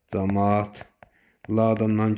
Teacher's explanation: Camaatla sözündə isə a-nın biri düşəcək. Camaat laan kimi deyiləcək.